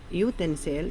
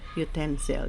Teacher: It is stressed on the second syllable, utensil.